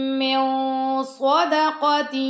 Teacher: کے بعد، خیر من، پہلے ہم می پہ غنہ کریں گے، اس کے بعد نون کے بعد صاد آ رہا ہے تو یہاں پہ ہم اخفا کریں گے